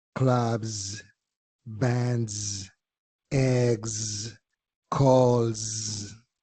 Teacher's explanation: Por otro lado, las palabras que terminan en B, D, G, L, M, N, R, V y Y, como la quieras llamar, hacen su sonido plural como si fuera una Z vibrada. Es un sonido diferente que no lo hacemos en español.